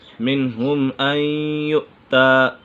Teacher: نون سکن کے بعد یا حروف یرملون میں سے ہے تو یہاں ادغام یرملون ہوگا، یعنی غنہ کر کے پڑھیں گے